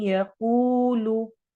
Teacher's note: मई यकूलु मई इदगाम हो रहा है गुन्ना के साथ। कू वाव मद्दा लंबा करेंगे और कॉफ को मोटा करेंगे और लू को लंबा नहीं होने देना। यकूलु लू लू नहीं करना।